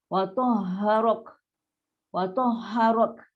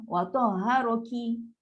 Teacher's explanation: So bunyi ke belakang tu adalah sifat yang ada pada huruf kaf. Dia ada sifat hams kan, angin yang terlepas.